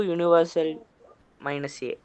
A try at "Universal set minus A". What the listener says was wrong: Universal set minus A, not universal minus A. Universal set minus A.